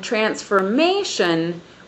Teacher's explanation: On transformation, we have the stress on the third syllable once again.